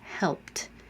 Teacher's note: And the answer is T, helped. It might sound a little more like a D because in context, I'm starting my voicing for the next word